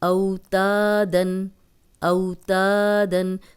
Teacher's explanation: صرف الف مدہ لمبا ہو رہا ہے، واو لین لمبی نہیں ہو رہی۔